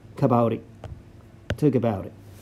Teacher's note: when the T is in between two vowels, this T becomes like larirero. T becomes larirero.